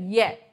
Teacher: जीभ एकदम से ऐसे आ जाए य देखो महसूस करके देखना जीभ पीछे की तरफ ऊपर टच होती है य में · य का उच्चारण स्थान क्या हो जाता है तालू हो जाता है